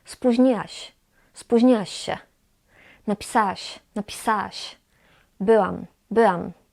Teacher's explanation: Na przykład spóźniłaś, napisałaś, byłaś. Kiedy mówimy szybko, często nie czytamy tego ły.